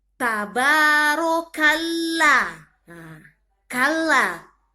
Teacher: Ditarik ya bacanya karena dia ada tasdid.